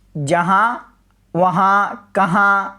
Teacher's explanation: आखिर में नून गुन्ना आ रहा है और ये नाक से आवाज़ आ रही है